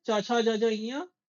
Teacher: च वर्ग च छ ज झ ञ और य और श भी तालव्य से बोला जाएगा।